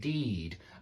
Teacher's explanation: i would even say that the it is higher pitched and the e is slightly lower pitched but it's a longer sound